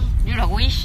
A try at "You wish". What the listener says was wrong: No, not a wish. So you wish. You wish. Not a wish. You wish.